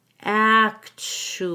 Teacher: the first syllable and then the TU makes a CH sound we connect the u to the a with a w